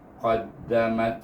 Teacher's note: Kemudian mim bertemu dengan ta yang mati, maka baca dengan dari bibir tutup, baca dengan huruf ta yang hamas, qaddamat. Dia bunyi mat, ta tu.